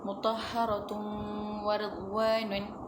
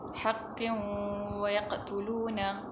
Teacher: Bacaan tanwin yang dimasukkan ke dalam huruf waw dan didengungkan sepanjang 2 harakat